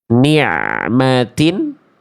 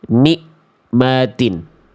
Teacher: Suaranya kalau ain itu dari tengah tenggorokan dan tidak terputus. Kalau hamzah dari pangkat tenggorokan dan suaranya mesti terputus. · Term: ain sukun